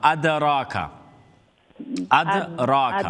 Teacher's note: রার উপরে ফাতহা full mouth letter ফুল mouth আর রা লম্বা বিকজ অফ আলিফ মাদ্দা